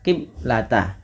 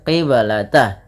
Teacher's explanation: di sini ada bacaan qalqalah maka suara bnya harus dipantulkan. Kesalahan yang terjadi di dalam membaca bacaan qalqalah yaitu tidak memantulkan bunyi suara bnya. · di sini ada bacaan qalqalah, maka suara ba-nya harus dipantulkan